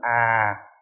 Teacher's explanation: cho nó hạ cái tần số xuống, độ cao xuống